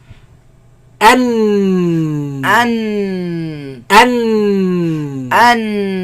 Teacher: And in the sides closed, the sound goes back and comes from the nose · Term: noon